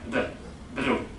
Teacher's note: Japanese people can't say the L because they don't have it in their sound system. So they have a sound which is between the R and the L. It's like a D. Like a tap